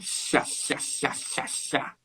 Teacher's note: O ar escapa para os lados, som de CH e tudo mais.